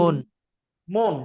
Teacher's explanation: ময়ের সাথে যে অ আছে, ও এর মতো উচ্চারণ, এটা সংবৃত, বিবৃত না।